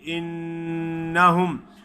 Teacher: نون پہ شد ادا کریں گے، غنہ بھی ادا کریں گے